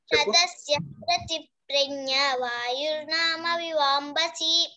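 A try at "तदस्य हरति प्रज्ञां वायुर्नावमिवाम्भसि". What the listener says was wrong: వాయుర్నామ కాదు వాయుర్నావ వకారం వా వాయుర్నావ వివాంబసి వాయుర్నావ మివాంభసి వాయుర్నావ మివాంభసి వాయుర్నావ మివాంభసి చెప్పు నామ కదమ్మి నామ కాదు నావ వివాంభసి కాదు మివాంభసి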